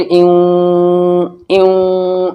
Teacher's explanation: کیونکہ نون ساکن کے بعد واو آ گیا، ادغام ناقص ہوگا غننے کے ساتھ